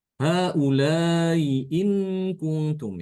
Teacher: ya Hamzah yang pertama itu ditashilkan ya dibaca Tasil itu artinya dia tidak dibaca Hamzah beneran tapi setengah-setengah ya setengah Hamzah separuh